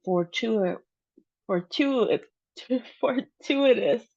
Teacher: we have the emphasis on the second syllable, tu.